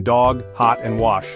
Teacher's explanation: A as in lot in RP is short, low and back with lip rounding heard in dog, hot and wash.